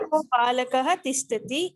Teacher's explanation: The Visarga becomes O. Before certain consonants. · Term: consonant Sandhi